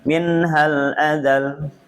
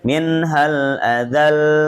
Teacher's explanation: Azal lamnya langsung ditarik sedikit dipanjangkan ya. Dibedakan dari lam yang tidak tasydid.